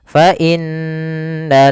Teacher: Kemudian fa inna lakum, adalah fal fa inna lakum, ada huruf nun yang berharokat tasydid, maka kita hukumi dengan bacaan gunnah. Maka di sini kita tasydidkan nunnya dan ditahan suara dengungannya atau suara gunnahnya. Gunnah itu memasukkan suaranya ke rongga hidung.